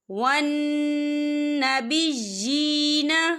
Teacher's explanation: ان تَتَّخِذُوا الْمَلَائِكَةَ وَالنَّبِيِّينَ، یہ دیکھیں ون، یہاں نون مشدد ہے تو یہاں پر غنّہ ہوگا، اور بی جی یا کے نیچے کھڑی زیر ہے تو ہم اسے 2 یا 3 حرکت کے برابر کھینچ کے پڑھیں گے